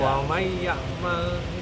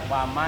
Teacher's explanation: nun mati ketemu ya, baca Quran itu harus mai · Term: idgham